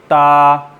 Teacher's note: आपकी ज़बान दोनों सामने वाले दांतों की बैक पे लग रही है, यहाँ से आप इसको उठाएंगे, ता।